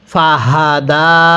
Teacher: এই গোল হাগুলো উচ্চারণ করার সময় গলার মধ্যে একটু আওয়াজ করব